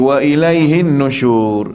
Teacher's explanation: Pastikan wajibul gunnah atas nun yang bersabdu.